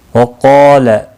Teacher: وقال، قاف اور الف دونوں پر پڑھ جائیں گے۔ قاف مستعلیہ ہے اس لیے پر پڑھا جائے گا، اس کے ساتھ میں الف پہ آیا ہے اس لیے وہ بھی پر پڑھا جائے گا۔